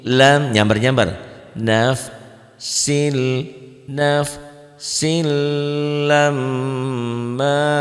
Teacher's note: Ini hukum tanwin. Tanwin ini ketemu lam ya, ketemu lam jadi idgham bila gunnah. Atau secara mudahnya ini dua patah dibaca satu kalau ketemu tasdid.